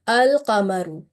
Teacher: And the other lam in this noun is carrying the sign, the mark of sukun, and this type of lam is read as a clear lam, or it is manifested, and this is called the manifestation of lam.